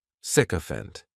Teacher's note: this noun has 3 syllables, and the stress is on that first syllable. The spelling may throw people off to the pronunciation, but that "sic" is just pronounced sick, sycophant.